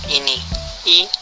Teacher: depan tinggi atas tak bundar tertutup